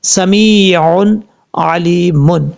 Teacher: اب یہاں دونوں یا مدہ ہیں، میم کے بعد بھی لام کے بعد بھی، یہاں دونوں کو لمبا کریں گے ایک ایک الف کی مقدار، کیوں؟ اس کی وجہ یہ ہے کہ یہاں یا مدہ ہے، یا ساکن سے پہلے زیر ہو تو یا مدہ ہوتا ہے، یہاں یا ساکن سے پہلے زیر ہے اس لیے اس کو لمبا کریں گے ایک الف کی مقدار۔